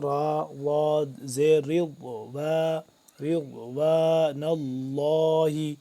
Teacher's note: ضاد جو ہے وہ ادا ہوتا ہے زبان کی جو بائیں کروٹ ہے وہ لگتی ہے اوپر والی داڑھوں کے ساتھ